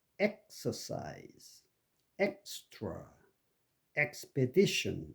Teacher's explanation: 이 EKS에서 K와 S 사이에 음절이 끊어집니다. 그러니까 exercise가 아니고 exercise, extra, expedition 이런 식으로 음절이 X의 중간에서 즉 K와 S 사이로 끊어지는 것을 유의하셔야 됩니다.